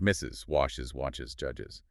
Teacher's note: You physically need that extra syllable with the a's sound to make it pronounceable.